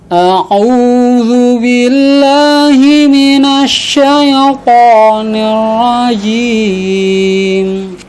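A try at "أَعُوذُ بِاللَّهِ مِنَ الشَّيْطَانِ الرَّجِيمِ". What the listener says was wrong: Ya, di huruf to-nya nanti diperbaiki lebih. huruf to itu makrotnya adalah di ujung lidah ketemu dengan pangkal 2 gigi seri atas. Sama seperti ta dan dal. Yang bedakan adalah sifatnya.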